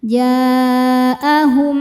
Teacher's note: Berikutnya ada idgham mimi karena mim sukun ketemu mim berharakat. Cara bacanya masukkan dan tahan bunyi dengung